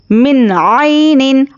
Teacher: میم نون زیر من. یہاں پر نون ساکن کے بعد حرف حلقی آیا ہے تو اظہار کا قاعدہ ہے، اس لیے یہاں پر نون کو ظاہر کر کے جلد پڑھیں گے. من عین، عین یا زبر عی.